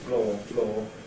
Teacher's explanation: nowadays no difference for most people certainly for me these are absolutely identical homophones · the distinction that used to exist between a centering diphthong and a long monophthong in the mid-back area has gone. So that 100 years ago people would have distinguished between the floor, on which I stand, and the floor, which is a mistake or some kind of a blemish.